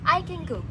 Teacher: G in go makes the preceding nasal sound to come out as ng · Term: nasalization